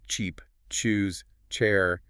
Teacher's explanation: It begins with a hard stop and resolves into a friction release. Specifically, the see sound contains a hidden t sound at the very beginning. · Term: affricate